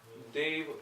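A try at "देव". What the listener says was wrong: Deva, not Dev. You said Dev.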